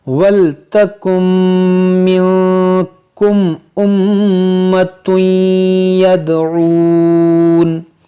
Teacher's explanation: اس نون کو میم میں داخل کر دیں گے، اس نون کی آواز نہیں آئے گی ، یہاں پر نون سائلنٹ ہو جائے گا، وَلْتَكُمْ مِنْكُمْ أُمَّةٌ